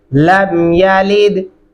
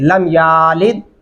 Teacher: या को लंबा नहीं करना आपने